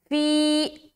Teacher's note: فی یا ساکین اور اس سے پہلے زیر کی حرکت یا مدہ کا قاعدہ ایک الف کے برابر کھینچنا ہے